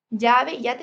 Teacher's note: La mayoría de los hablantes no distinguen entre doble L y Y. Llave y yate suenan igual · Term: Yeísmo